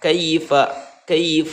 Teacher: ketika ada huruf ya atau yang sebelumnya berharokat fathah ini dibaca lunak dan dibaca pendek ya tidak boleh dibaca panjang karena ini huruf lainnya berada di tengah ya buka di akhir